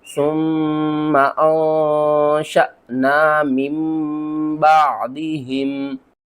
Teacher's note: नून साकिन के बाद अगला हर्फ बा आ जाए तो हम क्या करते हैं, नून को ख़त्म कर देते हैं, मीम को पढ़ते हैं